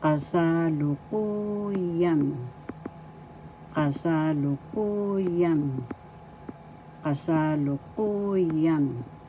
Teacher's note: First syllable ka, second syllable sa, third syllable lu, fourth syllable ku, fifth syllable, yan. The accent is in the fourth syllable.